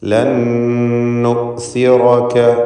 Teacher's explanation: ഇതിന് ഇദ്ഗാം ബിഗുന്ന കാമിൽ എന്ന് പറയുന്നു. ലൻ നുസിറക, ഒറ്റ ഷദ്ദുള്ള നൂന് മാത്രമാണ് ഉച്ചാരണത്തിൽ ഉണ്ടാവുക